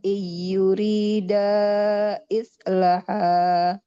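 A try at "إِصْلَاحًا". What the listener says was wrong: Hmm, lamnya panjang. In yurida islaha islahan yuwaffiqillahu bainahuma. Islaha. Nah, jadi lamnya panjang ya karena ada alif kecilnya.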